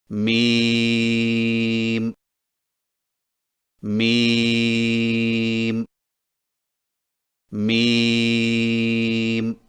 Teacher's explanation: میم کی ادائیگی میں ہونٹوں کے خشک حصے کو قدر نرمی سے ملا کر باریک آواز میں پڑھیں، یعنی میم میم میم۔